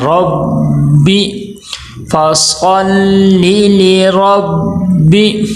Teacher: با کے اوپر تشدید آ گئی ہے، یہاں پہ بھی با کو سختی کے ساتھ رک کے پڑھنا ہے